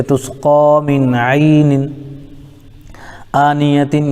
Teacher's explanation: نون کے نیچے دو زہر کی تنوین ہے، تنوین کے بعد حروف حلقے میں سے حمزہ آ رہا ہے اس لیے اظہار ہوگا